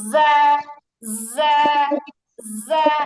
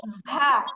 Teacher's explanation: আর আমি যদি হচ্ছে বাতাস বের করি তাহলে উচ্চারণটা হবে ঝা। তো নরমালি হচ্ছে যা, বাতাস বের করে ঝা